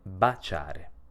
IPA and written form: bat͡ʃare (baciare)